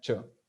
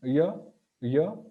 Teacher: so Y and CH they are touching the same point but while pronouncing CH it's a full contact and while pronouncing y it's slightly touching